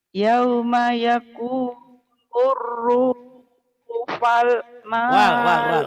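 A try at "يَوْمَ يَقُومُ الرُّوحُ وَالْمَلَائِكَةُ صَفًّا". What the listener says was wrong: wal. Bukan pal, wal. Ruhuwal.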